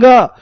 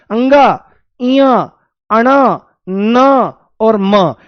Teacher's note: नासिक्य मतलब नासिका। नासिका से जब इनका उच्चारण करते हैं, तो हवा नाक से भी बाहर निकलती है। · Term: नासिक्य व्यंजन